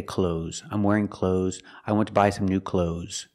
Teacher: And I don't make the TH sound when I speak. I say clothes.